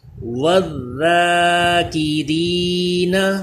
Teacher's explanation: Next یہ ذال جو ہے، اس پہ زبان اوپر کے دندوں سے چپکا کے پڑھیں، باریک پڑھیں گے اور سیٹی پیدا نہیں ہونی چاہیے، وہ زا پہ پیدا ہوتی ہے، یہ ذال ہے، واو کو ذال سے ملائیں گے۔